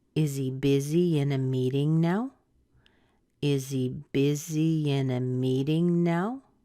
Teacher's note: is a yes/no question so what does that mean for you yes/no questions go up at the end so we're going to hear a rise at the very end